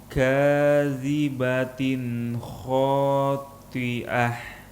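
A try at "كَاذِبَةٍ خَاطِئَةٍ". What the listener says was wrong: Tadi berubah jadi ain. Hati-hati.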